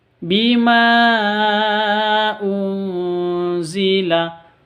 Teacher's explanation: Mad bertemu dengan Hamzah di dua kata panjangnya boleh dua boleh empat boleh 5 sampai 6 · Nun mati bertemu dengan zain atau za, samar didengungkan. Samar didengungkan, 2 ketuk. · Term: Mad Jaiz munfasil, Ikhfa hakiki